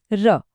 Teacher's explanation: जीभ में एक कंपन होता है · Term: प्रकंपित